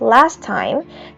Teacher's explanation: most people drop the first T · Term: consonant cluster simplification